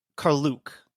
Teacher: the indigenous pronunciation puts the emphasis on the second syllable